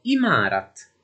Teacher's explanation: la 3ayn è semplicemente non pronunciata